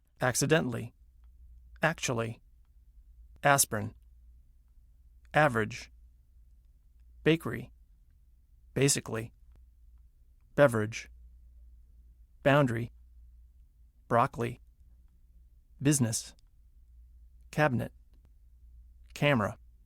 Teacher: Some longer words that are stressed on the first syllable squeeze weak syllables right out. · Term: Squeezed out syllables